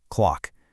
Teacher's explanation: Hit that hard K at the very back of your throat.